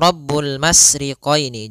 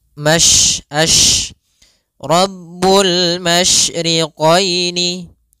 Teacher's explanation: Tafasyi adalah salah satu sifat yang terkandung di dalam huruf shin, yaitu menyebarnya suara. Sehingga jangan dibaca Rabbul masriqaini, jangan dengan huruf sin, tapi dia huruf shin.